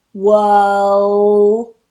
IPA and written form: wɜːl (world)